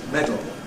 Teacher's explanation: we usually go straight from the [d] to the [l], lateral release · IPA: [ˈmedl̩]